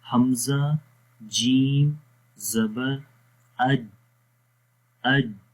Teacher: ایک تو اس میں سانس رک جاتا ہے اور دوسری جو اس کی جیم کی کوالٹی ہے وہ شدت ہے۔ شدت کا مطلب ہوتا ہے سختی، یعنی کہ جس حرف کے اندر شدت والی صفت پائی جاتی ہے اس حرف کو ہم سختی کے ساتھ پڑھتے ہیں، اور مطلب وہاں پر ہوتا کیا ہے کہ آواز مخرج میں بند ہو جاتی ہے۔